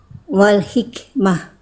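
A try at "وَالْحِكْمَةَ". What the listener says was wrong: Hak kecilnya tegaskan. Harokat ujungnya dibaca dulu aja Bunda. Wal hikmata.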